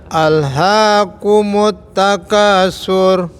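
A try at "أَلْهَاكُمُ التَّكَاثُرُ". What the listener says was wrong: Baik. Sudah Pak. Barakallahu fiik.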